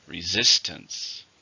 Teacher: stress on the second syllable resistance · How many syllables in resistance? 3. Stress on the second syllable.